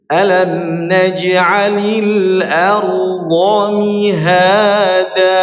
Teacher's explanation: Jangan naj alam najalil naj ya. Huruf ain tanpa tanpa angin ya tanpa ada anginnya. · Huruf jim jangan sampai ada suara c-nya, ya. Jangan alam naj'alil ya.